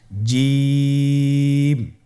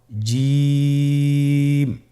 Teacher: এর মাখরাজ হলো জিহ্বার মধ্যখান তার বরাবর উপরের তালুর সঙ্গে লাগিয়ে উচ্চারিত হয় · জিম হরফটি বারিক হরফ এটা উচ্চারণ করতে হবে তিন আলিফ টেনে